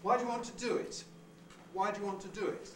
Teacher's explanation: on do why do you want to there is our head the first syllable is the onset no prehead